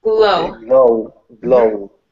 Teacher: Give me more L on glow so that I know it's different from grow.